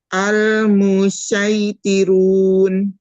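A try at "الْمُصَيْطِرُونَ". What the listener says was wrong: Betul.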